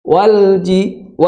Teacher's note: Jim itu tidak memiliki sifat yang menghembuskan nafas, Jadi bukan walji. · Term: sifat hamas